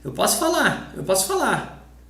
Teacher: Eu posso falar, but in a normal conversation, with a Brazilian, I would just say, eu posso falar, eu posso falar. We cut this R and S at the end of the word when we are speaking fast in Brazil.